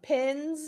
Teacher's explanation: So, voiced is the Z sound, pins.